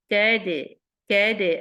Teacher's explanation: ایلا، رو heavy ہے، رب پی کا با پہ شدہ، میک شور رب پی، رب پی کا. قید، اب دال سکون کے ساتھ ہے تو مخرج میں جا کے یہ قلقلہ کا ساؤنڈ بناتا ہے